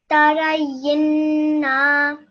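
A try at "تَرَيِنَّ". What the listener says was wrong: Oh, you made it long again. Say that once more. Your na should be yinna.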